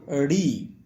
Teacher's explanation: মূর্ধন স্বর উচ্চারণের স্থান হচ্ছে মূর্ধা